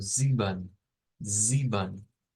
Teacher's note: Vamos a pronunciarlo como sieben, sieben. No es con una E al final, sino que es con un schwa.